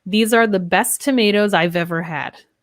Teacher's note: This ends in the Z sound, these, which links to our A.